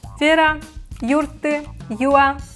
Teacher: in imperative verbs we stress the first syllable, not the last one as it's usual in Udmurt